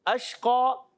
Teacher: اشقا، شین میں منہ میں آواز پھیلتی ہے. اور شین کا مخرج جیسے جیم کا مخرج تھا، وہی جیم شین یا، وسط زبان وسط تالو، تالو کے درمیان سے اور زبان کے درمیان سے شین، جیم شین یا، یہ 3 ادا ہوتے ہیں. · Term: تفشی